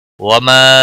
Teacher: وما مد منفصل ہے، 3 الف کے برابر کھینچ کر پڑھیں گے